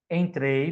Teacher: do E para o I, ditongo decrescente